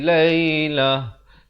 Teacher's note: Kalau waqaf ya. Ta marbutah, ta simpul ditukarkan kepada bunyi ha.